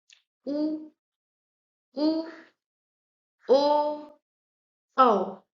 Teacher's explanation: आपके ओष्ठ जो हैं वो वृत्त के आकार की तरह खुल रहे हैं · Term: वृत्ताकार मुखी स्वर